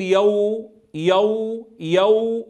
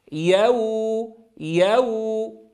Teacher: لا أقول يو يو يو فأفخم الياء والواو، وكلاهما مرقق. يو يو مع ضم الشفتين ضما محكما عند الواو.